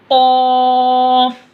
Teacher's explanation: ज़बान की जड़ से पढ़ते, और क़ाफ को मोटा पढ़ना है , जैसा सौद को मोटा पढ़ना है वैसे क़ाफ को भी